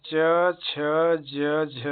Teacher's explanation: उच्चारण करते समय जिह्वा ऊपर उठकर तालु का स्पर्श करती है तथा कंठ छिद्र अवरुद्ध हो जाता है। फलस्वरूप हवा अबाध मुख को बाहर निकलने में बाधा होती है का सामना करना पड़ता है। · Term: स्पर्श संघर्षी व्यंजन